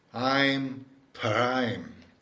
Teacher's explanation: it's an aspirated p. You essentially exhale when you say the p p. Whereas, if it didn't have the h, it'd be p- p and p.